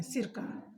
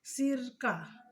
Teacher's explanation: जैसे अगर सिरका हम कह रहे हैं, सिरका एक साथ बोले, सिरका का मतलब हुआ तरल पदार्थ, लेकिन अगर हम बीच में अल्प विराम ले लेते हैं सिरका, तो ये सिर से संबंधित हो जाएगा, यानी अर्थ का एकदम बिल्कुल चेंज हो जाएगा इसका। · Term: संगम